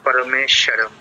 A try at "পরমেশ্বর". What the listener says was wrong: না, শরম নয়,